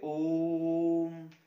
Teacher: पहले संस्कृत में ओम ऐसे लिखा जाता था, तो इसका जो उच्चारण होता है जैसे ओम, बहुत लंबी सांस के साथ लगातार उच्चारण किया जाता है, उसे हम प्लुत स्वर कहते हैं।